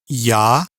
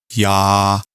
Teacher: it's another example of a not pure vowel in Russian because as you could hear the sound kind of changes in the beginning yah and then lands on the vowel a